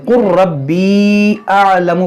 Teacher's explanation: اس لام کو را میں داخل کریں گے. قر ربی اعلم پڑھیں گے.